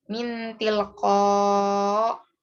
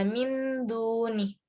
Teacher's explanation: Cara membacanya adalah samar-samar. Tidak sejelas idhar, tapi tidak selebur idgham. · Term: ifa